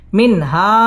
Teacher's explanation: মিন ইজহার গুন্নাহ ছাড়া স্পষ্ট করে পড়তে হবে